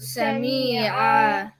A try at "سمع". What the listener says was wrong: That's too long. Sami'a. If you said Sami'a, there would have been a ya here, like Sami'a. So Sami'a.